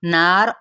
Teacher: नून गुन्ना, गुन्ना करते हुए मद्देसली बिल अलिफ है और रा साकिन करते हुए पुर पढ़ा जाएगा।